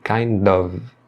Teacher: A preposição of aqui, ela é pronunciada com som de V, tá? Muitas vezes a pessoa pronuncia com som de F.